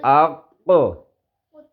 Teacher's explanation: تو اس کے مخرج کو ادا کرتے ہوئے اس کی آواز لوٹ کر واپس آئے گی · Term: قلقلہ